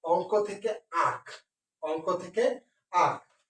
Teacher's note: নাসিক্য ধ্বনি লোপ পেয়েছে এবং লোপ পেয়ে একটি চন্দ্রবিন্দু ব্যবহৃত হয়েছে।